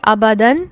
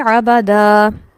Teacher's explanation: ابدن کو کیسے پڑھیں گے، ابدا، یہاں الف مدہ کے طور پر اس کو پڑھا جائے گا اور لمبا بھی کیا جائے گا